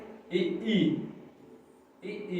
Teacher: ई, देखिए इसका उच्चारण स्थान कहां से हो रहा है, तालु से।